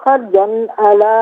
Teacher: دو زبر کی تنوین پر غنہ نہیں ہوگا کہ آگے حرف علقی عین آ رہا ہے.